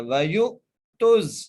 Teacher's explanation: حنفاء وَيُقِيمُوا الصَّلَاةَ، آگے وَيُؤْتُوا الزَّكَاةَ، واو کے اوپر زبر ہے، یا کو حمزہ سے ملا کر جھٹکے سے ادا کرنا ہے